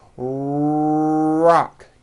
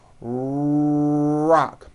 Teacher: my lips are coming forward and my tongue moves back in my mouth, and I push out the R sound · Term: American R sound